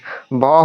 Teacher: ভ হচ্ছে মহাপ্রাণ আর ঘোষ।